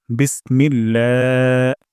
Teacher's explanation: বিস সিন থেকে আমরা বাতাস বের করব বিস তারপর মিল্লা ইলাতে আল্লাহ শব্দ এখানে আমরা এক আলিফ তান দিব এক আলিফ তান লম্বা করে দিব